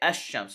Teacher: we say the sheen with the shadda and we ignore the lamb we the lamb shakun is written